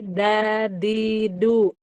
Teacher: Itu ujung lidah ditempelkan ke pangkal gigi seri atas. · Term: dal